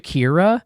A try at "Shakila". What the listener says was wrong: Shakila, there's an L. Shakila, Shakila. Shakila.